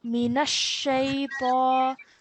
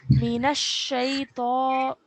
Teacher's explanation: the Noon and the Sheen have to be joined with force